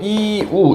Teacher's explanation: 유도 결국엔 이우, 약간 이런 식으로 발음되거든요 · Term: 반모음 이